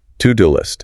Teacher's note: Notice how the first two words link together. It sounds almost like one word.